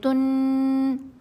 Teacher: جب ہم غنہ کرتے ہیں تو ہماری زبان منہ میں اوپر تالو کے ساتھ لگتی ہے، آواز ناک میں چلی جاتی ہے · یہ غنہ ہے اور اس کو کتنا لمبا کرنا ہے؟ 2 سیکنڈ